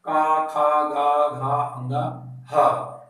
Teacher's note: जैसे हम उच्चारण करते हैं का, खा, गा, घा, अंगा, ह, तो ये हमारे कंठ के निचले भाग से इसका उच्चारण होता है।